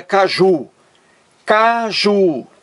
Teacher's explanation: duas sílabas a sílaba mais forte é a última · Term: palavra oxítona